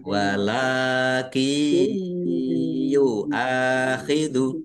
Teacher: Masuk dengan mendengung yaitu mendengung ya. Nunnya sukun tidak dibaca langsung masuk ke huruf iya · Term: idgham bi gunnah